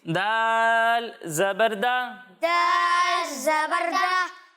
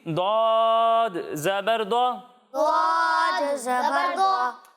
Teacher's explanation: जब हम दाल की अदायगी करेंगे तो इसे बारीक पढ़ेंगे, और जब हम दौद की अदायगी करेंगे तो दौद हुरूफ मुस्तारिया में से है, इसलिए इसे हम मोटा करके पढ़ेंगे